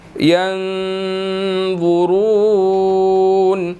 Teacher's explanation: आगे ज़ा और रॉ है, दोनों को हमने मोटा अदा करना है